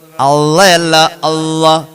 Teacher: അവിടെ അല്ലാഹ് ഉച്ചാരണമുണ്ട്. നാവിന്റെ തുമ്പ് മുൻപല്ല് മുളയ്ക്കുന്നതിന്റെ മുകളില് ആ മോണയോട് ചേർന്ന് വേണം